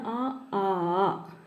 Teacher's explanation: ഇവ ഉച്ചരിക്കാൻ കണ്ഠ്യം അഥവാ തൊണ്ടയുടെ സഹായം വേണം